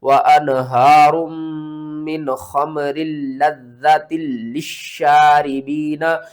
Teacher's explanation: 2 بار میم کو پڑھنا ہے، 2 بار لام کو پڑھنا ہے، 2 بار زال کو پڑھنا ہے ، 2 بار اسلام کو پڑھنا ہے، اور 2 بار شین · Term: تشدید